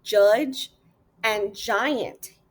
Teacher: Even though judge and giant use different letters, the J and the G, they both produce the same J sound. This sound is called a voiced post-alveolar affricate, and it's just one single sound.